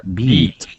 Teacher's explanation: You also stretch the sound. You drag the vowel sound a little bit more.